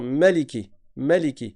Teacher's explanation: il y a une autre lecture qui est valable qui est de dire maliki maliki sans prolongation